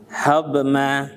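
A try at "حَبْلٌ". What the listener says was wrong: Jangan sampai mantul dotnya. Jadi untuk huruf dot saat sukun juga hati-hati nih ya.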